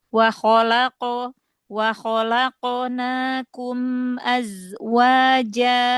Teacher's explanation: coba huruf qof-nya dijaharkan lagi. Ee jangan ada hames walaupun sedikit.